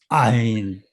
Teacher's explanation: 모음이 시작할 때 목에서 성대가 닫혔던 성대가 딱 열리는 순간 · 목을 막았다가 띄게 되면 그러면 조금 더 귀에 들릴 수 있는 그런 소리가 나는 자음이 이 아인입니다. 그래서 이것은 사실은 유음에 해당된다 이렇게 얘기할 수가 있겠고요. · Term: 후음